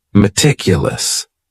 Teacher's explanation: That first syllable also has that schwa, that A sound, that reduced vowel sound.